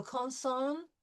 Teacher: We will find out later in this lesson that when we have a vowel in front of an N or an M, it's going to be nasal. But when we have two N's together, a double N, we will not do a nasal on sound. We will actually hear the N sound. So consonne, T, et le son, here's the nasal ON, R ouvert.